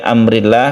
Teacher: Kenapa ini dibaca tipis karena sebelum lafdzul jalalah ini berharakat kasrah kalau berharakat kasrah berarti lam jalalahnya ini dibaca tipis